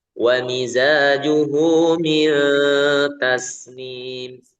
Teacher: Dan mil jangan ditebalkan. Dengungnya jangan tebal. · Nun mati ketemu ta itu ya ikhfa-nya ada dengung dan dengungnya tidak tebal ya. Tipis karena huruf ta itu kan dibaca tipis ya.